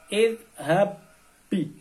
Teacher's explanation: Ini ba yang pertama harus melebur kepada huruf yang kedua. Maka disebut idgham.